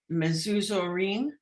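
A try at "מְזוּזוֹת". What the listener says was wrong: That's a tav. Mezuzot.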